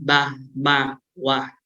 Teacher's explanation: So when we pronounce the sound sound bilabial, right, the upper lip, right, and lower lip compress, they press together, right.